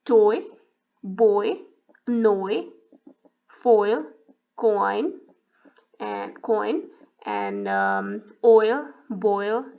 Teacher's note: when you say oi, your lips are rounded, and it starts to neutralize, lips start to neutralize their position when they glides toward e.